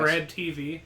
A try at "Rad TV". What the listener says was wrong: The B is silent.